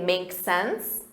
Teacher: Or you can simply shorten that and say, makes sense, with a rising intonation.